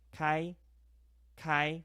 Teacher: Kai is open. K A I first tone flat.